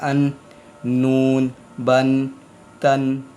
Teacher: है मख मख नंबर तीन है जब तरफ लिसान ऊपर यानी जुबान का कोना ऊपर के दांतों की मसूड़ों से लगता है तो फिर नून अदा होते है